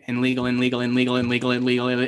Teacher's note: the n sound is a very weak liquid sound and sometimes it disappears when you say a word over and over and over again